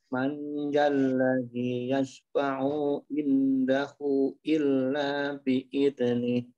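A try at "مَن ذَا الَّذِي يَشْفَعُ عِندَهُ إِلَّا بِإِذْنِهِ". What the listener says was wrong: Ah, yashfa'u, jangan sampai ditahan, karena tidak ada huruf mat, ya. Kemudian indahu, ada tanda harokat baris memanjang, maka dibaca 4 atau 5.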